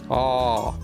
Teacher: Esta suena como la A, pero con la lengua más atrás en la boca, como cuando el doctor necesita revisarte la boca.